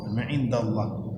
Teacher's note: Tapi Allahnya yang dibaca tebal, indahnya tidak ikut tebal.